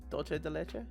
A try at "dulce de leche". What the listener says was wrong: Okay, it's dulce. Yeah, basically that C is pronounced like an S. And U, pronounce it more like a light U versus an and you're fine. Dulce. And it's a U, not an O. So it's dulce.